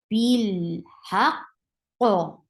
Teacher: The sound is stopped. There is no flow of sound at all. Haq, and then the second qaf will get qalqala.